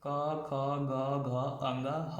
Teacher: अ आ क वर्ग मतलब क ख ग घ अंग ह, और विसर्ग का उच्चारण स्थान क्या होता है? कंठ होता है।